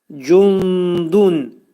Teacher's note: Cundun dəl hərfinin məxrəcində gizlədirik nunu. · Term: ixva